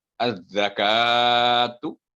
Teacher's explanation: यहाँ पर जब जाल की अदायगी करनी है तो आपकी जुबान का सिरा ऊपर के दांतों के अंदरूनी साइड टच करे, और काफ जो कश वाला ये बारीक आवाज में, लेकिन इस पर वर्टिकल फतह है, इसलिए इसके बाद 2 सेकंड लंबी होगी।